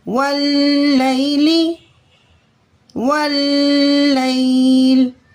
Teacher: واو لام زبر ول، لام یا زبر لئی، واللی، لام زیر لی، واللیلی واللیل۔ اس لام کو ہم مضبوطی اور جمع کے ساتھ پڑھیں گے لیکن باریک پڑھیں گے